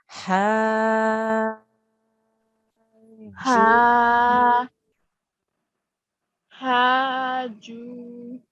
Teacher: Okay, so we say 4 to 6 seconds for the joining of the ha to the jim, and then the jim with the waw means we have to elongate the jim for 2 seconds after that, okay, because it's a waw mad, because the jim has a dhamma on the top.